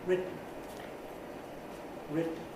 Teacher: the first syllable is on a high pitch and begins to fall. Second syllable is on a low pitch. This is because a nuclear accent has been put on the first syllable, written.